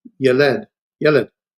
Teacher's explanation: the accent's in the first syllable